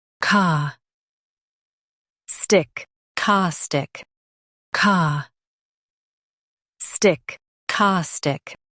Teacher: Stress the ca syllable and keep stic light.